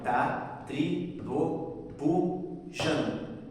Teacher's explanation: a gente para de contar no Jan porque é a última sílaba tônica mais forte, porque como ela é mais forte, aquele T não vai ter um peso rítmico.